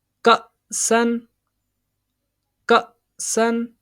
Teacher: یہ حمزہ ساکن ہے، اس کو جھٹکا دے کے پڑھیں گے